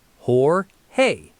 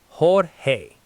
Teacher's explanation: While people accidentally say George with a hard English J, the standard American industry pronunciation is Hor-hay.